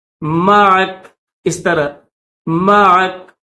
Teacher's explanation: کاف کے اوپر زبر نہیں پڑی جائے گی، اس کو جزم کے ساتھ پڑھیں گے